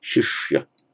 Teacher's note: it's the palatal shi, and then the retroflex sh